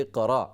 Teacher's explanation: تو یہ صرف را کا زبر ہے، حمزہ یہاں سے حذف ہو جاتا ہے